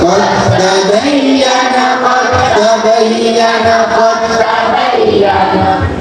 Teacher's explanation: dalnya tidak dibaca karena semua makhraj dan sifatnya masuk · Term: idgham kamil